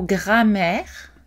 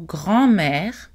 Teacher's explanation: le mot grammaire n'est pas nasalisé ici, mais le mot grand-mère est nasalisé. Donc, essentiellement, ces mots sont identiques, sauf pour la nasalisation de la voyelle.